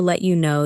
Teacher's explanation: You may notice that let you sounds like letcha,